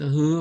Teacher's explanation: 목구멍에서 바람이 쑥 지나가요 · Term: 연한 흐 바람